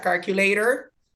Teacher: Pero ¿qué pasa con la T comúnmente en el idioma inglés? Y se da en el idioma americano específicamente, que la T se convierte en R en la pronunciación. Y entonces esto sale, y será calculator, y la pronunciación sale más fluido, más rápido.